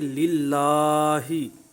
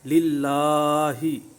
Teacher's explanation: खड़ी ज़बर का ख्याल रखते हुए तो इसको दराज करेंगे और हा की ज़ेर को मारूफ पढ़ेंगे। हे नहीं पढ़ेंगे, ही पढ़ेंगे।